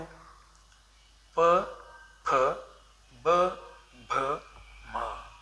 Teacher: ಎರಡು ತುಟಿಗಳ ಸಹಾಯದಿಂದ ನಾವು ಏನು ಮಾಡ್ತೀವಿ ಆ ಅಕ್ಷರಗಳನ್ನು ಉಚ್ಚಾರಣೆ ಮಾಡ್ತೀವಿ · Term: ಓಷ್ಟ್ಯ